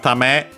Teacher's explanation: Tame is a noun, accent on the last mora